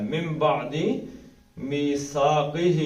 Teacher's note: میم پڑھنا ہے. من بعد میثاقہ قہ 2 حرکتیں کھینچیں گے، کھڑی زیر ہے